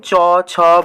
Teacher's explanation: কি বললাম যে সকল ব্যঞ্জন ধ্বনি উচ্চারণকালে কি হচ্ছে জিহবা প্রসারিত হয়ে তার অগ্রভাগটা কি করছে শক্ত তালুতে গিয়ে স্পর্শ করছে এবং শ্বাস বায়ুর পথে বাধা সৃষ্টি করছে সেই সকল ব্যঞ্জন ধ্বনিকে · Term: তালু ধ্বনি